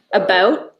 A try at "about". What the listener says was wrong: Or you say a boot. It's pretty close. It's pretty close.